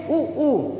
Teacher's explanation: उच्चरित करके आप देख खुद सकते हैं, जैसे ऊ देखेंगे दोनों ओठ पर बल पड़ रहा है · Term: ओष्ठ